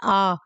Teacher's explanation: जब आ बोलेंगे तो आपका मुंह पूरा खुल जाएगा, पूरा फैल जाएगा।